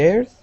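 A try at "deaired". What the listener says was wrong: Okay, give me a good D sound. Right now, you're pronouncing the Spanish D, and your tongue is right up against the back of your teeth. Okay, saying diered. All right, you want to say diered, diered.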